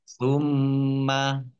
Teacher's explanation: mimnya dibaca double, ada mimnya dibaca gunnah, mim tasdid. Ya, dibaca gunnah, mendengung, ditahan 2 harokat.